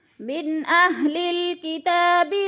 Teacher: نون ساکن کے بعد حمزہ حروف ہلکی میں سے ہے تو ادھر اظہار، یعنی اخفا نہیں کریں گے، ناک میں آواز نہیں لے جائیں گے، اظہار یعنی ظاہر کر کے لفظ کو پڑھیں گے۔